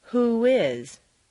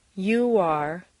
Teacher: a w glide after an oo sound. Don't forget that the sound of the American O is really O-oo.